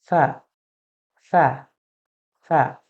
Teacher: আমরা সা উচ্চারণ করার জন্য আমাদের যে জিহ্বা, এই জিহ্বাটাকে আমরা উপরের ২টি দাঁতের এ আগার সাথে আমরা লাগাবো। লাগানোর পরে আমরা জাস্ট সিম্পলি সেখান থেকে বাতাস বের করে দেব।